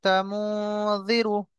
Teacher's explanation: নুনকে একালি পরিমাণ নাকের মধ্যে তুলে ধরে রাখতে হবে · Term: ইখফা